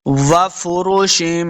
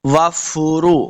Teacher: واو کو جب پڑھیں گے دونوں اپنے ہونٹ گول کریں گے